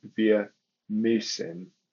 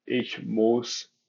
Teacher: Those dots indicate that the accent has changed. It's more of a frontal U rather than a more back of the mouth U, like in ich muss versus wir müssen.